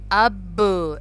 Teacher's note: با کو ہم پش کر کے پڑھتے ہیں، ب کر کے پڑھیں گے تو اس کو کہتے ہیں قلقلہ